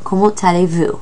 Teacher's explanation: The word comment, you typically would not say that T at the end of it, but because the word aller starts with the letter A, you pronounce the T. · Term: liaison